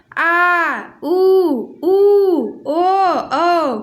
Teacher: जिन स्वरों के उच्चारण में जीभ का पीछे का हिस्सा उठता है पश्च स्वर कहलाते हैं